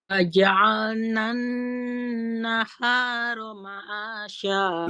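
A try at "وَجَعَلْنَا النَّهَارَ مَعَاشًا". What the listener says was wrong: Ma'asya. Agak turun lagi sedikit, Pak.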